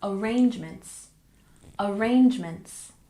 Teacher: we stress the second syllable Arrangements